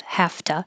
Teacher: you can keep it a T because your voice is off for the F, have to, or you can change it to a D because you're going to turn your voice on for the vowel So either way, but you're not going to hear, I have to leave at 2.